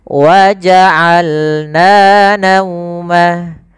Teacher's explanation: Dari tengah tenggorokan kita lafalkan ain.